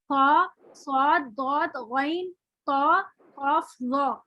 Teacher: ऐसे हुरूफ जो अदायगी के वक्त मुंह भर के खूब मोटे अदा हो रहे हैं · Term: हुरूफ मुस्तालिया